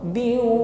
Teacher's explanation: Jadi bin di sini kasrah tanwin, bin langsung kita idghamkan, kita masukkan pada huruf waw, biu. · Biu, ketika idgham, ketika gunnah berdengung, maka bibir dihimpun ke depan.